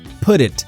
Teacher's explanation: The T links to the next vowel and becomes D.